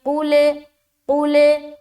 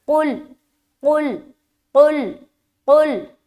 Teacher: قاف جب لام میں ٹچ ہو رہا ہے تو لام میں آواز اسٹاپ ہو جا رہی ہے